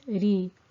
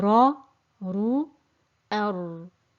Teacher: There will be no concaving in the middle of the tongue, no echo in the mouth, and no narrowing in the throat. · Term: the Ra with thinness